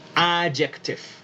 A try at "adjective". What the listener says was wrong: Adject, que te suene más la K, ¿listo? Pronúnciala más. Adjective, muy bien.